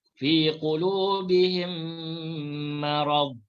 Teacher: Idgham mislain kita baca dengan memasukkan mim pertama ke dalam mim kedua serta didengungkan.